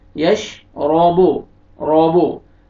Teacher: रा को फतहा, रा को मोटा करके पढ़ेंगे, यश राबो, राबो, आइन यश राबो।